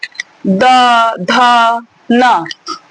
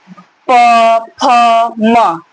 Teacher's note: जिन वर्णों के उच्चारण में स्वर तंत्रियों में कंपन होता है। एक झनकार होगा, एक नाद होगी। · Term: घोष ध्वनियां